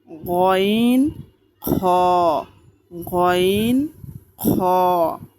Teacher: তিন নাম্বার মাখরাজ হলকের শেষ হইতে গন খইন খ